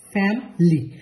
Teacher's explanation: নেটিভরা যে জিনিসটা করে, ওরা এই ভিতরের যে ভাওয়েলটা, সেই ভাওয়েলটাকে বাদ দিয়ে দুইটা সিলেবলে ভাগ করে ফেলে।